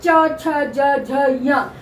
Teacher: जीभ का बीच का भाग तालु को छूता है, तब आवाज निकलती है च छ ज झ य। तो 5 ही वर्ण तालु से बोले जाते हैं।